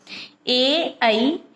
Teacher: ए ऐ ये दोनों कंठ और तालु से बोले जाते हैं, कंठ तालव्य वर्ण हैं।